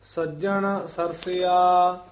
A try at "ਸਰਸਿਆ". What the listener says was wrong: ਇਹਨੂੰ ਨਹੀਂ ਕਹਿਣਾ ਸਰਸਿਆ, ਇਹ ਪੋਲਾ ਹੀ ਉਚਾਰਨ ਕਰਨਾ।